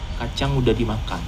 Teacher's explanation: Here the only difference is that sudah becomes udah